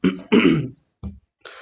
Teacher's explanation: आधा ह जैसा उच्चारण, और आ के साथ मिल करके हो जाएगा महाह